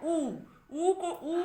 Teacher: উচ্চারণ করলেই কিন্তু ঠোঁট কুঞ্চিত হচ্ছে, আর জিহ্বার অবস্থান উচ্চে হচ্ছে। আর সংবৃত অর্থাৎ উচ্চারণ করলে আমাদের মুখবিবর সংকুচিত হচ্ছে, মানে সংকোচন ঘটছে, প্রসারিত হচ্ছে না।